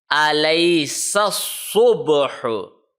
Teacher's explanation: in Sod, the tip of the tongue is touching at the back side of the lower front teeth